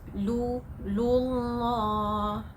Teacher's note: Alright, so can you hear the sound law? That is what you mean by tafkhim, by heavy.